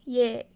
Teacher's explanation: if we added an ㅣ sound just before the vowel, we get a Y sound at the start